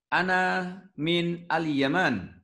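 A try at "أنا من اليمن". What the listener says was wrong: Al-Yaman, ahsan.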